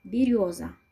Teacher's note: В слове береза ударный слог рё. И звук ё в этом слоге ударный звук.